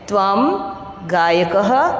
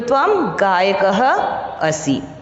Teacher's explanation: जहाँ विसर्ग होता है वहाँ पर किसकी हल्की सी ह की ध्वनि निकलती है